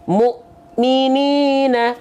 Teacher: Mu di sana terhenti atau terhentak karena bertemu dengan hamzah sukun